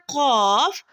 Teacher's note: قاف کی ادائیگی میں زبان کی جڑ کوے کے متصل تالو پر لگے گی اور موٹی آواز میں پڑھا جائے گا